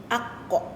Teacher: di pangkal lidah dan diangkat ke langit-langit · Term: huruf qaf